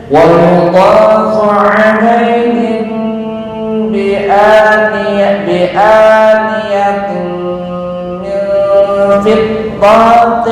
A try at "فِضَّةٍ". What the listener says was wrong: Nah, kepanjangan fiddatin.